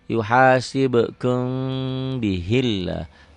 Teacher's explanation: Lafaz Allahnya dibaca tipis, tarkik, karena sebelum lafaz Allah baris bawah.